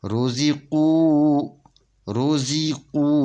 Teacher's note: زے نہیں پڑھنا، زی پڑھنا ہے، روزی۔ یہ واو سے پہلے پیش ہے، یہ واو مدیہ ہے، اس کو 2 حرکت کے برابر کھینچ کر پڑھیں گے۔ روزی قو، روزی قو، یہ الف نہیں پڑھا جائے گا۔